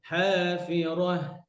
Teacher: যেন ঠোঁট গোল না থাকে, হাফিরাহ ছড়ায় যাবে